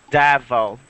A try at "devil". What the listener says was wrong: Careful that you don't put an A sound. It's not devil, it's devil.